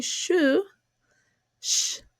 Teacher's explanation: when we say shu sh the lips are rounded just a little bit